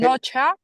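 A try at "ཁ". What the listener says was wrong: No, KH is never cha. Never cha. This is cha. This is cup. Cap. Cap.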